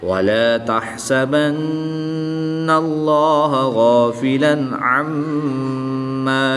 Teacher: نون مشدد اور میم مشدد میں ہمیشہ غنّہ ہوتا ہے۔ اس غنّہ کی مقدار ایک الف یعنی 2 حرکات کے برابر ہوتی ہے، تو ہم اس کو یہاں پر غنّہ کر کے پڑھیں گے۔